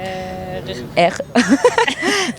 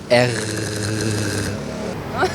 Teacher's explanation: J'ai l'impression qu'on fait racler le son sur le haut du palais. R. Genre France, le bon R, tu vois.